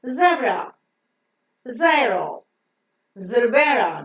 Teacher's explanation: The pronunciation, the phonic sound of Z is Z, Z, Z. The tip of the tongue goes very, very close to the teeth ridge, releasing the air between the gap that is present and have the vocal cords getting vibrated so that the voiced sound is pronounced with an audible friction.